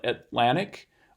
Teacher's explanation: the T in Atlantic is not aspirated. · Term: unreleased